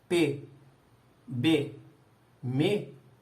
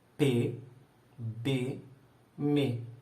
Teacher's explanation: Essas três consoantes são bilabiais. Mas o M, o me, ele é nasal.